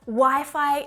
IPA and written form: waɪ faɪ (Wi-Fi)